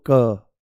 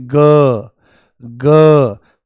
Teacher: क तो आपको कोई वाइब्रेशन यहां पर महसूस नहीं होगी परंतु जैसे ही आप बोलोगे ग पूरा झंझना जाता है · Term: अघोष